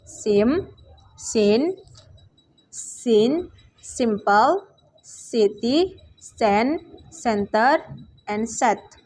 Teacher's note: voiceless alveolar fricative sound S